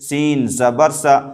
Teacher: زبر کو جلدی پڑھیں، تھوڑا بھی نہ کھینچیں، زبر کی آواز اوپر کو اٹھتی ہے